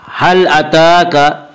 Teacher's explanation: ता के ऊपर खड़ा ज़बर है, खड़ा ज़बर को एक अलिफ के बराबर खींच कर पढ़ेंगे